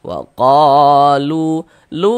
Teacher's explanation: Sehingga qo dibaca panjang. Mad tha'i panjangnya dua harakat. Waqolu lu dibaca panjang.